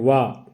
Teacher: इसका उच्चारण स्थान है दंतोष्ठ व्यंजन है ये।